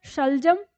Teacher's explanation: तो हमारा जो श है तालू के नीचे हमारी जीभ रहती है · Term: तालू श, तालु श